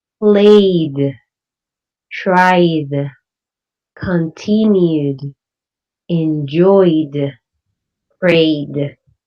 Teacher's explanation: words that end up in a vowel sound use the D pronunciation for ed